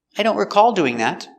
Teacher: And the verb is recall with the stress on the second syllable.